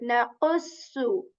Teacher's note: qaf, which is articulated when the back part of the tongue touches the hard palate with strength, like naqussu, different than K of English, okay?